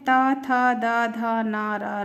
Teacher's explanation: ता था दा धा ना रा ला, ये कहलाते हैं दंतस्य, क्योंकि इनके उच्चारण में हमारी जीभ दांत को टच करती है